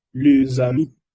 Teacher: Porque en francés, cuando un sustantivo se termina con un E, con S, ¿verdad? Y el sustantivo que sigue empieza con un H o con un vocal, la S se une y se pronuncia Z.